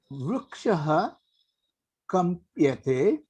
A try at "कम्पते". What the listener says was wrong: अत्र यकार मास्तु महोदय कम्पते एव If you add yakara, it will become something else. Don't add Kampate.